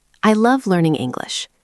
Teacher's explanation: We use falling intonation for statements and commands. Your voice starts higher and goes down at the end.